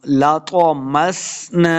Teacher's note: لَطَمَسْنَا، سین پہ سیٹی کی آواز آئے گی، نون کے آگے الف ہے، اس کو دو حرکات ہم نے لمبا کر کے پڑھنا ہے